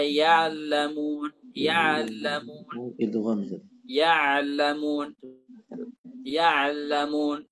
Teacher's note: Nah, sebagian orang ketika mengucapkan ain yang setelahnya ada lam atau mim, fa innahu yaqfizu 'anil aini qafzan wa yudkhilu lam fiha idkhalan. Jadi dia melompat dari ain itu kemudian tiba-tiba masuk ke lam gitu. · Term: setengah ain